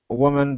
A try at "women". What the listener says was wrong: So women instead of woman, women.